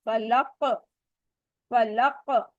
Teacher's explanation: جو آخر میں آ رہا ہے حرف کے، اس کو ہم نے شدت سے تھوڑی سی زیادہ واضح کر کے ہم نے پڑھا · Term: اسٹرانگ کلکلا